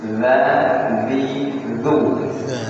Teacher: Cara mengucapkannya adalah ujung lidah itu disentuhkan kepada ujung gigi dza dzi. Ada tiga huruf yang tempat keluarnya sama yakni ta dengan d. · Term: zal